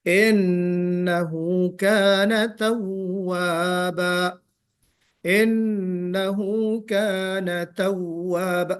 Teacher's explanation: توابا میں واو نکالتے ہوئے منہ کو گول کرنا ہے